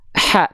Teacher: Ha kecil dia mengalir nafas, hams. Ha, tapi nggak berdesis. Cuma nafas doang.